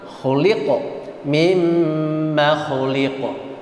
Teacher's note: Dan qaf, ada qaf di situ, sifatnya memantul.